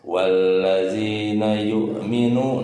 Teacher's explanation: waw sukun sebelumnya domah. Hukum tajwidnya mad tabi'i, panjangnya 2 harokat.